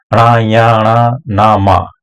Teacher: पंचम वर्ण नासक्य व्यंजन कहा। इनका उच्चारण नासिका के द्वारा होता है। अगला है अंतस्थ।